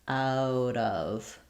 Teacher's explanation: When it comes to out of, we link these as well, and we have another flap there.